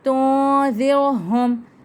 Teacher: نون ساکن کے بعد آ رہا ہے آپ کے پاس ذال، تو اخفا کا قاعدہ، ناک میں آواز چلے گئی · لا کو کھینچیں ایک الف کے برابر، الف مدہ کا قاعدہ ہے · میم ساکن کے بعد لام آ رہا ہے، اظہار شفوی کا قاعدہ، تو اسے واضح کر کے پڑھیں گے